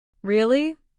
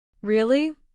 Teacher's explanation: Really with a high tone surprise. Really with a low tone already known. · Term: intonation